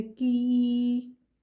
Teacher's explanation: ساکن حرف ہمیشہ اپنے سے پیچھے والے حرف کی حرکت سے مل کر پڑھا جاتا ہے، اور یہ یا مدہ ہے، یا مدہ کو ہم 2 سیکنڈ کی دیر لگا کر کھینچیں گے